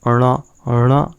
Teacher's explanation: आपका मूर्धा भी उपयोग में आ रहा है और नासिका भी उपयोग में आ रहा है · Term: पंचमाक्षर